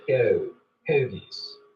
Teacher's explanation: the goat diphthong starts to move forwards in the mouth